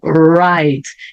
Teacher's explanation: E não esqueçam o R sempre enrolado. No início da palavra também.